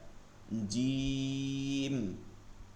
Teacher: জিম এটা জিব্বার মধ্যখানে, এখানে কোনো দাঁতের প্রয়োজন নাই, মধ্যখান তালুতে লাগাইয়া